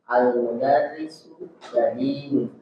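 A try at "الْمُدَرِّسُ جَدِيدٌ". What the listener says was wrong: Ayo, bagus.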